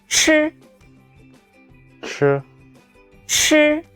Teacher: The airflow is stronger than 知.